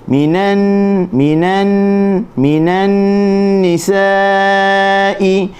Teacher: alif dan hamzah dalam satu kalimah dia ada ombak rindu tu di atas huruf alif, maka kita baca dengan panjangnya 4 harakat · Nun bertasydid gunnah 2 harakat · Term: maddul muttasil